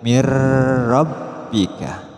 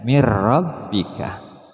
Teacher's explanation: ro ketika nun mati dilafkan siap siap langsung melafazkan ro mirika khusus lam dan ro tidak disertai dengung